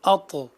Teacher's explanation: اگلا لفظ دیکھیے، اط یہاں طا ہے جو کہ زبان کی نوک اور ثنایا علیہ یعنی سامنے والے اوپر کے جو دو دانت ہیں ان کی جڑ سے ادا ہوتا ہے یہ حرف اط اور یہی طا کا مخرج ہے۔